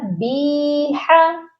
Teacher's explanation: بِمَصَابِیحَ، یہاں پر آپ دیکھیے با کے ساتھ جو ہے یائے مدہ ہے، اکثر لوگ اس کو بیحا پڑھتے ہیں یا بیحا، بی کو کھینچتے ہیں تو ہا کو بھی کھینچ دیتے ہیں، تو یہ غلطی آپ نے بالکل نہیں کرنی، صرف بی کو کھینچنا ہے کیونکہ اس کے ساتھ یائے مدہ ہے. ہا کے اوپر حرکت ہے، اس کو نہیں کھینچنا، یہ پڑھا جائے گا بیحا.